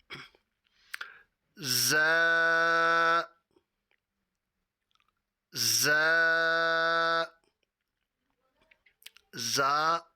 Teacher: ذال نرمی سے ادا ہوتا ہے جبکہ زا میں نرمی نہیں ہے، سختی ہے۔ · اس کا جو مخرج ہے وہ ہے زبان کی نوک اور دونوں دانتوں کے اندرونی کنارہ۔